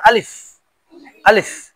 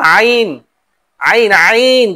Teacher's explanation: আলিফ যেমন সিম্পল, কোনো টান হবে না, আলিফ, আলিফ, কিন্তু আইন, আইন, আইন গলার ভিতর থেকে